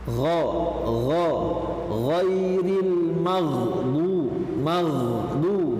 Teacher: Nah, di sini pada huruf ghain yaitu mempunyai sifat yang pertama isti'la, sama dia karena berada pada posisi tenggorokan atas, ya, suara ditekan ke atas. Kemudian ada tafkhim juga, dia tebal juga dan suaranya mengalir, rikhwa